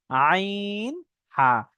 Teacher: অর্থাৎ পুরো মাঝখান থেকে যে কন্ঠনালী পুরো রয়েছে কন্ঠনালীর মাঝখান থেকে উচ্চারণ হয়